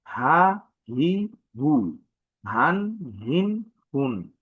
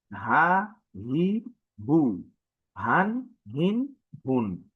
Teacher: হলকের অর্থ আমাদের কণ্ঠনালীর শুরু হতে উচ্চারণ হয়। ঠিক খ যে জায়গা থেকে উচ্চারণ হয়, আমাদের এই হাটা সেই জায়গা থেকে উচ্চারণ হয়।